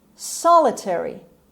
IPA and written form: ˈsɑːləteri (solitary)